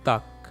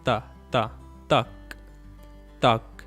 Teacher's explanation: one thing to notice in Urdu is that the T's are much softer and dentalized. You don't say tak, you say tak.